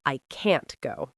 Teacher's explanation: when we say can't, negative, we make it sharp and strong, and we stop the T sound.